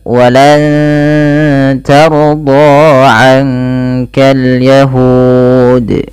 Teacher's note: ditahan suara nunnya dan disamarkan ke huruf ta. Makhraj huruf ta ini ujung lidah menempel dengan perbatasan antara gusi atas dan gigi atas atau gigi seri atas, maka walan ta bukan walang ta ya. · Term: ikhfa hakiki